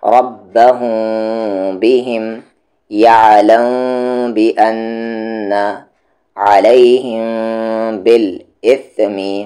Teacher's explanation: میم ساکن کے بعد با آ رہا ہے تو اخفا شفوی، یعنی وہاں پر میم ساکن کی آواز کو ہم چھپائیں گے۔